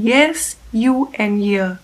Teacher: the middle of the tongue approximating closely to the palate and it is consequently referred to as a palatal approximant or palatal frictionalis continuum.